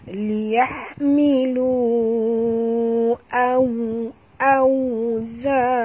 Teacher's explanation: waw di sini sifatnya lin lembut ya jadi kita kena baca memuncungkan mulut kita ya atau bibir kita · lu di sini panjang waw mad bertemu dengan hamzah maka menjadi mad jaiz munfasil panjang 4 hingga 5 harakat